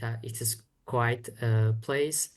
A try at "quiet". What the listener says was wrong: It's a quiet place. Sounds like quite or quiet. Slightly, slight mispronunciation. Quiet has two syllables. Quite has one syllable.